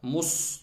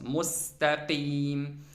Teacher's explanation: Bəzi insanlar bu sini, sükunlu sini qalın oxuyurlar, dodaqları qabağa verirlər. Nəticədə sin çevrilir olur sad. Müstəqim xətadır, təhrifdir.